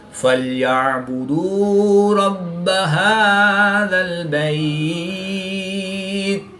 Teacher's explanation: عین کو حلق کے درمیان سے ادا کر کے پڑھیں گے. با مشدد ہے تو حروف قلقلہ میں سے ہے تو یہاں پر قلقلہ کبرا کر کے پڑھیں گے. وقف کی حالت میں یہاں پر مد لین عارض ہوگی.